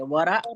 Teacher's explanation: वरा का र को मोटा करेंगे